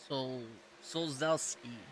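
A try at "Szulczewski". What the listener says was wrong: I think it's the Z is more like an H, so it'd be like Shulshevsky.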